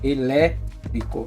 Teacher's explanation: O lê é mais forte